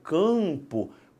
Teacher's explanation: Quando eu falo campo, parte do A vai para o nariz. Por quê? Porque a sua língua sobe um cadinho e empurra esse A para o céu da boca, fazendo uma nasalização.